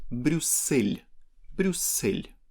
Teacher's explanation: soft sign makes the previous L softer in word Bruxelles